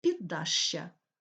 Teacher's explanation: ш звучить пом'якшено перед я